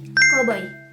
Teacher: terdapat dua fonem vokal, yaitu o dan i, yang terletak berdampingan di dalam satu suku kata yang sama atau silabel yang sama. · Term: gugus fonem vokal